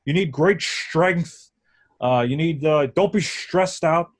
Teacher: So like if he said a word like stress, he would say stress. So he does the STR thing with a sh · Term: STR sound